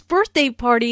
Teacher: notice that the normal stress for a compound noun falls on the first element of the compound